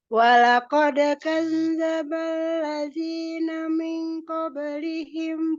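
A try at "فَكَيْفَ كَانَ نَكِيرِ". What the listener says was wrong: Iya, min qablihimnya lupa tadi dengungnya.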